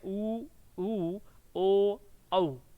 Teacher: अब आप देख लीजिए, वृत्तमुखी यानी कि जो होठ हैं आपके गोलाकार होते हैं, तो आप ऊ बोल के देखेंगे तो आपके जो आगे के जो होठ हैं इस तरह से गोलाकार स्थिति में आ जाएंगे जब आप ऊ बोलेंगे।